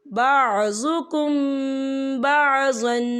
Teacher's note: یہاں پر اکفا شفوی ہوگا اور ہم یہاں غنہ بھی کریں گے